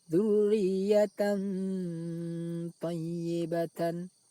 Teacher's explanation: suara tanwin dibaca samar antara izhar dan idgham lalu didengungkan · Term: ikhfa